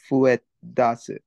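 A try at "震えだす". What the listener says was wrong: Close. It does have the fu, but it's uru. Furuedasu. Furueru.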